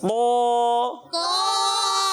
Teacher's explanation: طا بغیر ہونٹ گول کے موٹا کرنا ہے